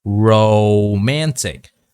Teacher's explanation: there's two sounds here for the long O sound. It's the O sound and it's the W sound.